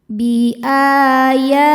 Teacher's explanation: Cara bacanya dipanjangkan 2 harokat. Bi'aya, ya hukumnya mad tabi'i muqaddar sebab huruf ya berharokat fathah panjang. Cara bacanya panjang 2 harokat.